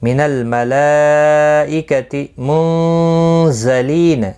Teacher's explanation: نون ساکن کے بعد حروف اخفاء کا زا ہے, اخفاء حقیقی ہوگا, گنہ کے ساتھ پڑھیں گے